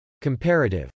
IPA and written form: kəmpˈærətɪv (comparative)